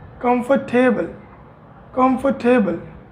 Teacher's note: In this word R is silent.